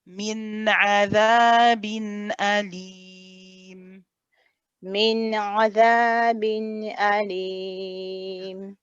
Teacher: Don't forget that slight squeeze for the ain here.